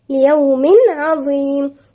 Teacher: ليوم عظيم هنلاقي تنوين وبعدها حرف العين، والعين من حروف الحلقية يبقى هنا في إظهار، يبقى نظهر التنوين مفيش غنة، إظهار بدون غنة